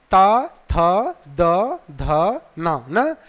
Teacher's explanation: ताथा वर्ण बोलते समय जिह्वा जो है दांतों से टकराती है, इसलिए उसका उच्चारण स्थान दंत कह दिया गया।